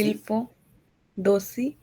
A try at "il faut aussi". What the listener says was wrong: दोषी नहीं, देखिए हम लोग क्या करते हैं, लिएजों करते हैं, लास्ट वाले टी को ए के साथ जोड़ेंगे, ओके। il faut aussi